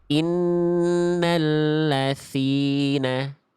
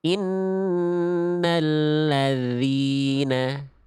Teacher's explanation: Yang A itu ada nafasnya, yang B tidak ada nafasnya dan zal tidak boleh mengalir udaranya